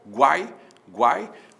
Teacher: o u é semivogal o a é vogal o i é semivogal temos um tritongo